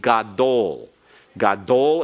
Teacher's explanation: gadol is accented on the last syllable